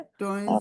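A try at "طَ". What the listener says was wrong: तोय नहीं है तोय नहीं तवा नहीं होगा, वाव नहीं लाएंगे हम, ठीक है।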